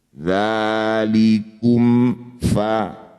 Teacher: Mim sukun baca jelas. Kum tidak usah dengum baru pindah ke huruf berikutnya. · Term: izhar syafawi